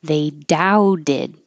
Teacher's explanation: So that T is a D.